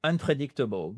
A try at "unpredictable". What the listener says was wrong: I understand it, but it's better to put that stress on the so the third syllable, unpredictable.